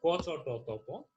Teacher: ক চ ট ত প এগুলো কিন্তু অঘোষ অল্প প্রাণ ধ্বনি, অর্থাৎ প্রথম সারির যে ধ্বনিগুলো রয়েছে স্পর্শ ধ্বনির মধ্যে সেগুলো হচ্ছে অঘোষ অল্প প্রাণ ধ্বনি।